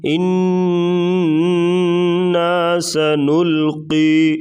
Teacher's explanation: انا یہاں پر غنہ کریں گے، سنل لام باریک اور قاف کو موٹا کریں گے۔